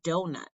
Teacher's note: a 2-syllable foot where the stress is on the first syllable, like the word donut.